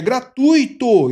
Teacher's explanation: Então, uma palavra paroxítona. E o U é o tônico, tá? É a vogal tônica, gratuito.